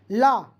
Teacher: ला का उच्चारण करते समय हमारी सांस जीभ के बगल में पार्श्व से गुजरती है। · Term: पार्श्विक व्यंजन